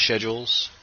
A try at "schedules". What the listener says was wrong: wasn't aware that meant pronouncing it with an H very prominently in it.